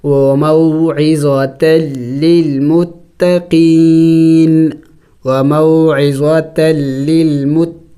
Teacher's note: وقف میں نون کو سائلنٹ کر دیں گے، یعنی ساکن کر دیں گے